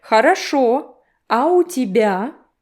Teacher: Хорошо, a little break, and questioning intonation.